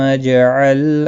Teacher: جیم ساکن پر قلقلہ ہوگا ، لام ساکن کو ہلانا نہیں ہے، علی لام کے اوپر